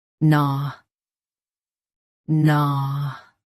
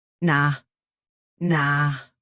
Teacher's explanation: US gnaw is flatter. UK gnaw is rounder.